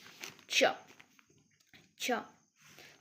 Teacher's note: T and this sh together it makes cha cha. So looks like two different sound but it means one single sound produced with the help of visible two different sounds.